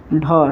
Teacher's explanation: दूसरा और चौथा जो वर्ण होता है वो महाप्राण व्यंजन के होता है और उसके उच्चारण में हंकार जैसी ध्वनि आती है